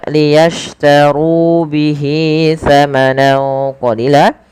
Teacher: tebalkan huruf ro-nya karena dia ro tafkhim